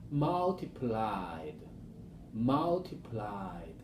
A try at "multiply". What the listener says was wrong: You're saying multiplied. The first one, multiply, without any D at all. Just let your mind think just the letter Y, the base form. Multiply. And then the past form, multiplied.